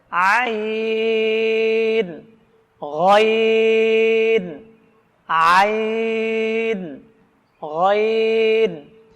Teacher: কণ্ঠনালীর মধ্যখান থেকে এই উচ্চারণটা আসতে হবে